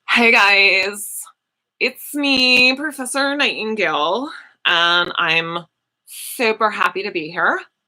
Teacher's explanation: this particular version of English that commonly occurs in women and white women in particular it's the sort of like vocal fry